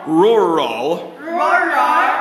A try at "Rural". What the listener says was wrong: Rural. Not ruler. Rural.